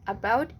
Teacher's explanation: It is possible to drop the t sound and sounding like this, about instead of about.